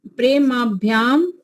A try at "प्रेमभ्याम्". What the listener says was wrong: माँ नहीं आएगा, प्रेम भ्याम, मकार छोटा हिर्सो आएगा, हिर्सो, प्रेम भ्याम। यहाँ पर भी नाम भ्याम है ना, नामाभ्याम थोड़ी है, नाम भ्याम तो प्रेम भ्याम।